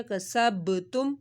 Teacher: کسب با ساکن تھا، اس کے اوپر ہم نے کلکلا کر دیا